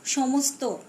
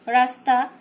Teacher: কেবল ত, থ, ন, র এর পূর্ববর্তী ধ্বনি হিসেবে তালব্য স-এর দন্ত স ধ্বনির উচ্চারণ শোনা যায়